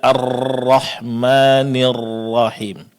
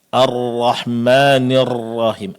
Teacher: huruf ra dibaca dengan getaran yang sangat jelas. Padahal dalam prakteknya dia mesti disamarkan bunyi getarannya atau bunyi pengulangannya. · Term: sifat takrir